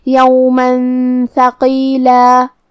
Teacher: کلمت یومن کے آخری میں میم پہ تنوین زبر ہے، پھر حرف تھا ہے کلمت ثقیلہ میں، تھا حروف الاخفاء میں سے ہے، تو ہمیں یہ حکم کو غنہ کے ساتھ ادا کرنا ہے۔ یومن ثقیلا، کلمت ثقیلہ میں حرف القاف کی ادائیگی زبان کے جڑ اور تالو کے نرم حصے سے ہے، قاف حروف تفخیم میں سے ہے، تو ہمیں اسے بھاری آواز میں پڑھنا ہے۔